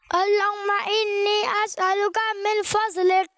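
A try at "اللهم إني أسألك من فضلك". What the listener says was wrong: فضلک ہوتا ہے, فض نہیں ہوتا ہے.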